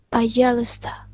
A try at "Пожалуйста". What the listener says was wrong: Nggak pakai U, tapi langsung aja, пожалуйста.